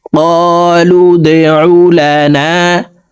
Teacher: দাল কলকলার হরফ নিচের দিকে ধাবিত করে ধাক্কা দিয়ে উচ্চারণ করব। লাম দাল পেশ লু দে, قالوا দে উলানা, قالوا ادع لنا ربك, বার উপরে তাসদিদ আছে, তাসদিদ ওয়ালা হরফ দুইবার উচ্চারণ করিয়া পড়িতে হয়, একবার পূর্বের হরকতের সঙ্গে আর একবার নিজ হরকতের উচ্চারণ হবে।